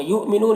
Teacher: یہاں پر حمزہ ساکنہ ہے، واو کی شکل میں جھٹکا لگے گا